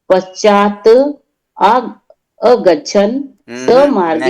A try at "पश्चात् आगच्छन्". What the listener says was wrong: नहीं नहीं नहीं, अगच्छन तो फिर आ कहाँ जाएगा, आगच्छन, पश्चात नहीं, तो आधा है, पश्चात आगच्छन,